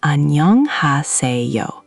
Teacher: The emphasis lands on nyeong and se.